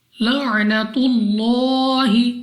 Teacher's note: تو اس لام آف اللہ کو پر یعنی موٹا پڑھیں گے، منہ اور آواز کو کھول کر، اور لام پر کھڑا زبر ہے تو لام کو 2 سیکنڈ تک لمبا بھی کرنا ہے۔